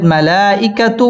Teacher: مد متصل চার আলিফ টেনে পড়তে হবে মালাইকাতু ওয়াও ঠোঁট গোল করে উচ্চারণ করতে হবে ওয়ার র পুর